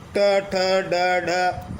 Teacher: इन व्यंजनों के उच्चारण में हमारी जीभ जो ऊपर वाले जबड़े का शीर्ष स्थान है, जिसे हम मूर्धा कहते हैं, उसे स्पर्श करती है और जीभ वापस झटके से बाहर आती है। इसे उच्छित व्यंजन कहते हैं, यानी जीभ झटके से वापस आती है, यानी उछलती हुई आती है, उच्छित।